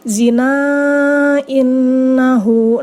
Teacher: ini adalah mad jaiz munfasil, bacanya 5 harokat.